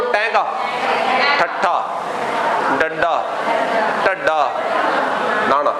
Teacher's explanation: ਜਿਹੜੀ ਜੀਭ ਸਾਡੀ ਲੱਗਦੀ ਹੈ ਕਠੋਰ ਤਾਲੂਏ ਨੂੰ · ਜੀਭ ਉਲਟੀ ਹੋ ਕੇ, ਪੁੱਠੀ ਹੋ ਕੇ ਲੱਗਦੀ ਹੈ, ਸਿੱਧੀ ਨਹੀਂ ਲੱਗਦੀ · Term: ਉਲਟ ਜੀਭ